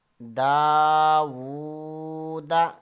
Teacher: واو کے اوپر الٹا پیش ہے تو واو کو ہم حرف مدہ کی مقدار کے برابر کھینچیں گے